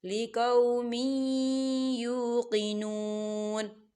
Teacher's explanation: دیکھیں میم کی نیچے جو ہے تنوین ہے اور تنوین کے بعد یا آ رہا ہے، اور یا جو ہے حروف یرملون میں سے ہے، تو یہاں پر ادغام ہوگا. ہم تنوین کو یا کے اندر مدغم کریں گے